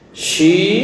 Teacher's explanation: Shi dibaca panjang 2 harakat karena ada huruf iya mati. Sebelum huruf iya mati ada tanda kasrah. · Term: mad tabi'i